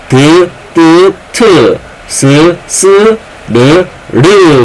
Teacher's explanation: 몸과 혀끝에서 나는 소리죠 그래서 잇몸 소리